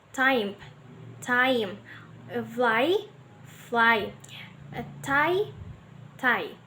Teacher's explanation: The A is longer in duration and forms the nucleus of the diphthong, while I is shortened and unstressed.